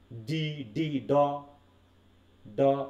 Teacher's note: একটা কম্পন গলার ভিতরে একটা কম্পন তৈরি হচ্ছে এবং একটা চাপ সৃষ্টি হচ্ছে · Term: ভয়েস